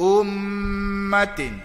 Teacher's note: wajibal gunnah. Dengung. Qadah dia 2 harakat.